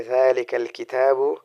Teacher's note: ذال کو ہم زبان کو اٹھا کے اوپر والے دانتوں کے اوپر رکھیں گے تو وہ ذال آرام سے ادا ہو جائے گا